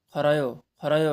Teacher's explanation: यसमा चाहिँ पछाडि स्वर वर्ण आएको कारणले यसलाई चाहिँ र नै पढिन्छ